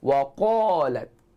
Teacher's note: Bukan betul-betul pada anak tekak tu, tapi hampir dengan anak tekak kedudukan dia, dan dia dibaca dengan tebal atas sifat isti'la yang ada pada huruf qaf tersebut